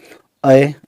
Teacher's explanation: फिर ए को हम ई से लिखेंगे और अय ये मिक्स हो जाता है। अ और ई दोनों जैसे चिपके हुए हों